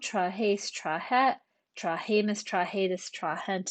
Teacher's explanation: Notice that the long E gets shortened before final T, NT, and entor